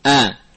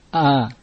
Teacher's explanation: Namun al-hamzah lebih dalam daripada ha. Ha di atas makhraj hamzah.